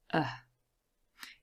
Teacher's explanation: in this video now the schwa is really easy to produce you just relax everything you produce a short sound and it is the central vowel sound so it goes right in the middle of our chart there's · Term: schwa sound